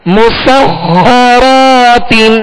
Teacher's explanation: مسخرات، میم سین کو باریک پڑھنا ہے، سین میں سیٹی کی آواز پیدا ہوگی، اور خا حروف مستعلیہ میں سے، لہذا پر یعنی موٹا کریں گے، اور خا پر تشدید ہے لہذا دوہرا پڑھیں گے، 2 مرتبہ پڑھیں گے. را کو پر کریں گے، را پر صبر ہے، را کے آگے الف مدہ ہے، 1 الف کی مقدار میں کھینچ کر ادا کریں گے.